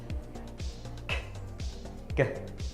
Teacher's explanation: The sounds are produced with the back of the tongue that articulates against the soft palate. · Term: Velar